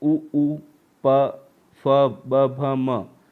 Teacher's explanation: ऐसे ही ऊ, प, फ, ब, भ, म, ये जो है क्या है, ओष्ठ मतलब दोनों होठों से इसकी साउंड निकलता है